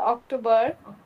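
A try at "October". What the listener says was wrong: অক্টোবর। একটু না, তারা তো একটু ও সাউন্ড করে। হ্যাঁ, অক্টোবর,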